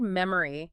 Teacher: It's the schwa sound which is that unstressed uh in the middle of mem.